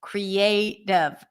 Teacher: the a is the primary stress cre is a full vowel is a pure vowel so we treat it as a secondary stress creative and then the last syllable is unstressed probably usually reduced